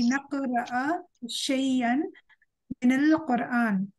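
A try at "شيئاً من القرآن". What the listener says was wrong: yes, we pronounce this word not shay'an. We pronounce this word shay'am. Shay'am min al-Qur'an. Joint with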